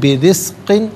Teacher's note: را کے نیچے زیر، را کو باریک کر کے پڑھا جائے گا، قاف کے نیچے 2 زیر کی تنوین ہے، اسے من کی میم کے ساتھ ملا کر میم کی آواز کو غننے کے ساتھ ادا کریں گے۔